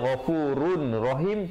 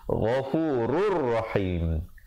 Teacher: Idgham, maaf di situ, idgham bila gunnah asalnya ghafurun rahim, tapi jadi ghafurur rahim